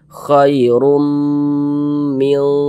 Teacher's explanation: melebur masuk ke huruf mim, bunyi tanwinnya, kemudian kita dengungkan. Jadi suara itu kita tahan, kita panjangkan sejenak.